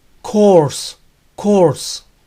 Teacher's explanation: para esa terminación o r s en donde la 'final desnuda la s siempre suena como ese y no como zeta